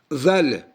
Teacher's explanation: Bu z dilin ucu dişlerden, kabak dişlerden çöle çıkır. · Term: peltek z